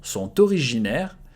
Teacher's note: The T and O, you have to make the liaison